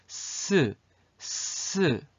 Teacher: 아랫니랑 이렇게 비비면서 마찰을 하면서 스 소리가 나는 거를 여러분들이 느낄 수 있을 거예요. 스 할 때 혀끝이 아랫니, 아랫니 뒤로 이렇게 이렇게 비비면서 마찰하면서 소리가 나거든.